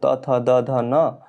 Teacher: जिन व्यंजनों के उच्चारण में जीवा को दांतों पर लगा लगाना होता है उन्हें दंत कहा जाता है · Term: दंत्य